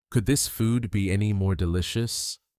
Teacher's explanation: Notice how the stress is always on the word be.